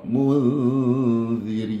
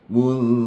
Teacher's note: Kan lidah kita bila kita dengung pada zal itu seolah-olah kita akan bawa lidah ke makhraj huruf zal, tapi tidak sebetullah. Tidaklah masuk terus ke makhraj huruf zal, kita tarik lidah sedikit sebab dia hukumnya ikhfa di sini. Dia bukan hukumnya idgham.